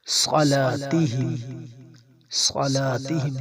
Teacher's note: صاد کو موٹا پڑھیں گے، صاد اور سین میں فرق ہونا چاہیے، صاد کو موٹا پڑھیں گے۔